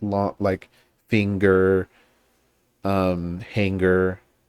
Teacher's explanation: So we say like long, like finger, hanger, right? We make the ng and then that immediately blends into the g sound. So like it kind of ends in that, it glides onto the ng and then I don't know, there's like a g that comes out of that. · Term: ng sound